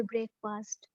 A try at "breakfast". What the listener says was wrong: it's not a break fast it's a breakfast okay yeah make your pronunciation good